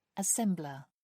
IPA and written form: əˈsɛmblə (assembler)